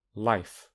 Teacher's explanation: the tongue touches the alveolar ridge, but the tongue becomes flat, which allows air to pass by both sides. A better word for flat is lateral, which is why it is an alveolar and a lateral approximant. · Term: alveolar lateral approximant